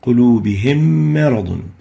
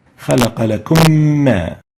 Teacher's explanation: merge the still meem, the first meem, Sakinah, with the second meem, the Meem Mutaharrika, producing a shadda and maintaining gunna for 2 units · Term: idgham